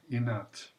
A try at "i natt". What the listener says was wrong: There is something else about the vowels, both A and E. I would like to hear them a bit more concrete. So I have the feeling that when you say natten, it's like it's a bit this indistinct vowel that we have in English, for example, when we say teacher.